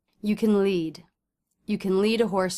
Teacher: that means can is a helping verb so we don't want to say can we instead want to reduce that word